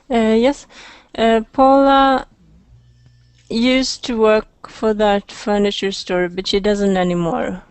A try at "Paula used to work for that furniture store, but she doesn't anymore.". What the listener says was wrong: Good. Used to. Okay.